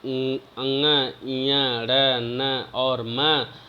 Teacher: अंग, ञ, ड़, न और म, इनको अनुनासिक भी कहा जाता है, क्योंकि इनका उच्चारण मुख के साथ नासिका से भी होता है